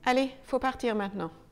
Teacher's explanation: selon la vitesse à laquelle on parlera, parfois, on oubliera entièrement le « il ». Allez, il faut partir maintenant.